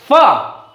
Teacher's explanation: ऊपर वाले दांत नीचे वाले होठ को स्पर्श कर रहे हैं